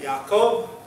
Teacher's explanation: So the omega would have the long O, so you have Jacob, and it would have a pronounced ya at the beginning. Jacob, rather than Jacob.